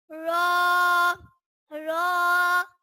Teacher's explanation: رو زبان کی نوک اور مقابل کے تالو سے ادا ہوتا ہے